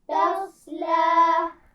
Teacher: صاد کی آواز کو تو آپ موٹا کر کے واضح کریں گے تف، لیکن اس کے بعد لام کی آواز کو موٹا نہیں پڑھیں گے. تفلا پڑھیے اس لفظ کو.